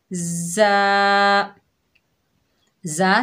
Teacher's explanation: ज़ा सख्ती और सीटी वाला हरूफ है।